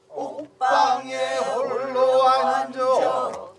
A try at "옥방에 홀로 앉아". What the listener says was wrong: 그렇게 바로 떨어지지 말고 옥방에 홀로 앉아.